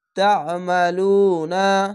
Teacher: তা'মালুনা পেশের পাশে অসাকিন 1 আলিফ টেনে পড়বেন। আইনটিকে মোটা করে গলা চিপে পড়বেন